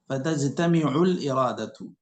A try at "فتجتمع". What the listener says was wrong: فتجتمع ميم کو کسرہ ہے شیخ